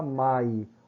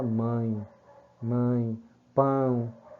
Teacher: É um som que sai pela boca e pelas narinas. Você não fala mai, você fala mãe, mãe, pão, certo? · Você não fala mai, você fala mãe, mãe, pão, certo? Então você vê aí a nasalização juntamente com a boca para emitir esse som fechado. Por isso que chamamos de ditongo. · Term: ditongo nasal